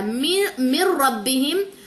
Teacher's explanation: نون سے نہیں جوائننگ دینی، زیر کو را سے ملانا، کیوں؟ کیونکہ یہاں پہ ادغام ہو رہا ہے بلا غنہ